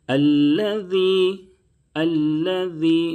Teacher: ذال کی ادائیگی میں زا کی طرح سیٹی کی آواز نہیں نکلنی چاہیے، ذال کو نہایت نرمی سے پڑھیں اور سیٹی کی آواز بالکل نہیں نکلے گی۔